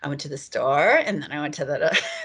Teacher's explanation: So the prototypical or stereotypical pitch variable that people are usually is socially salient enough that people are aware of it is so-called uptalk or high-rising terminal